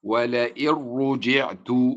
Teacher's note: ولئن رجعت نون ساكنة جاء بعدها حرف الراء، والراء من حروف الإدغام بدون غنة وتنطق هكذا ولئن رجعت، فتدغم النون في الراء إدغاما كاملا، لا أسمع لها صوتا ولا أسمع لصفتها وهي الغنة صوتا